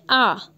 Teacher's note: आपको अलग से फील होगा कि आपकी जो जीभ है उसका मिडिल पोर्शन जो है वो ज़्यादा आपका पार्टिसिपेट कर रहा है, आप कह सकते हो, वो आपके बोलने में ज़्यादा भाग ले रहा है। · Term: मध्य स्वर